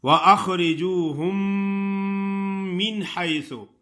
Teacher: میم تو دو ہیں لیکن دونوں ایسے مل جاتے ہیں کہ ایک میم مشدد ادا ہوتی ہے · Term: ادغام